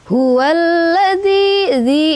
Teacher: Hualladzi dzi itu mad thabi'i. Karena ada kasrah bertemu dengan ya sukun dibaca dua harakat.